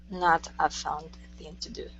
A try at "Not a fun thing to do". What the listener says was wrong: Practice the do at the end. Finish that sound. Do instead of d, do. Not a fun thing to do.